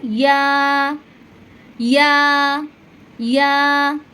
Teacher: এই ইয়াটা জিহ্বার মধ্যখান উপরে তালুর সঙ্গে লাগিয়ে এই ইয়াটা উচ্চারণ করবেন।